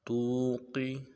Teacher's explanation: تا کو واو کے ساتھ ملانا ہے، واو مدہ ایک دال میں کھینچیں گے، قاف کو موٹا ادا کریں گے